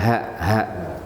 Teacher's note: Jadi di pangkal leher ini ada katup. Ketika dia terbuka, dia mengucapkan ha ha, ya kan? Jadi bukan di dada, tapi di pangkal leher.